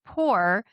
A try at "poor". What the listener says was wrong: not like the way you said poor. It's very condescending.